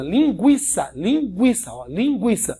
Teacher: O U aqui é semivogal, ó, fraco. O I é que é a vogal forte.